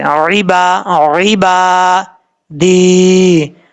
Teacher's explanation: اب اس کے بعد ہے فی عبادی، فا کے بعد جا ہے، 1 الف کی مقدار لمبا کریں گے، عین کو اپنے مخرج سے ادا کرنا ہے، کلیئر کر کے، عبا، عبا دی، یا مدہ 1 الف کی مقدار لمبا کر کے پڑھیں گے